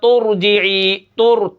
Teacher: تا کو را کے ساتھ میں نے ملا دیا، جو بیچ میں حمزہ کھڑا ہے یہ غائب ہو گیا